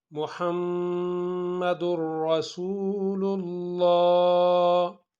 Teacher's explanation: میم کے اندر گناہ ہوگا کیونکہ میم مشدد ہے